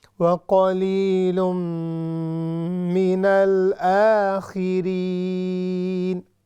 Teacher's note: تنوین ہے یعنی ڈبل ضمہ، اس کے بعد ہے میم، تو ہم نے اس پر بھی ادغام کرنا ہے. وَقَلِيلٌ مِّنَ الْآخِرِينَ آخرین علی اسٹینڈنگ فتحہ ہے، اس کو ہم نے لمبا کر کے پڑھنا ہے.